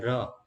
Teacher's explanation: જે વ્યંજનોનો ઉચ્ચારણ કરતી વખતે જીભમાં કંપન ઉત્પન્ન થાય તેવા વ્યંજનોને પ્રકંપી વ્યંજન તરીકે ઓળખવામાં આવે છે